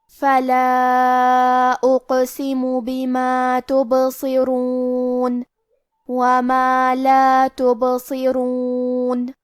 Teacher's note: حرف الصاد حروف التفخیم میں سے ہے تو ہمیں یہ حرف کو بھاری آواز میں اور منہ پھلا کے پڑھنا ہے. کیونکہ را پہ پیش ہے تو یہاں را کا حکم ہے تفخیم. · را پہ پیش ہے تو یہاں را کا حکم ہے تفخیم. ہم حرف الرا کو موٹی آواز میں پڑھیں گے